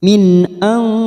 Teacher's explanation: nun sukun bertemu sod ikfa hakiki kita samarkan 3 harokat